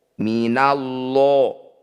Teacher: disebut lafaz Allah tafkim atau tebal lanya kita ganti lo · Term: tafkhim